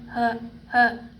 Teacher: Hijari yaitu ada di kerongkongan